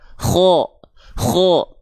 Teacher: kalau dia Huruf tebal terdengarnya tidak akan vokal a ketika fathah tapi cenderung condong pada vokal o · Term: huruf yang tebal